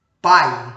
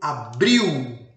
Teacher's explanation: vem depois da vogal tá como por exemplo em pai né começamos aí com uma vogal e o som desce para semivogal como em leite ou então como Abril né do verbo Abrir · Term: decrescente